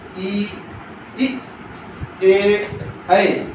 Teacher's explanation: जो जिह्वा के अग्र भाग से उच्चारित स्वर को हम अग्र स्वर कहते हैं